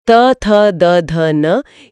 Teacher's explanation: और दंते व्यंजन जो त वर्ग है त, थ, द, ध, न ये दांतों के स्पर्श से उच्चारित होते हैं।